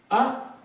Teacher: अब अर्ध विवृत, जिनके उच्चारण में जो मुंह है यहाँ पर ज्यादा खुलता था, इसकी अपेक्षा यहाँ पर आधा खुलेगा। तो आधा खुलने के अंतर्गत इसमें आ जाएगा अ, कम खुलना है, आ की अपेक्षा कम खुला अ